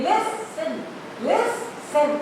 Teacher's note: I am stressing on list, not tin. So what I will do here, when I am stressing on this word list, I am not this L will not be double.